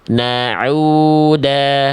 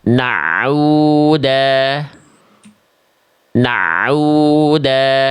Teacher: Ini yang tadi Bunda baca, ainnya jadi kayak ada tasydid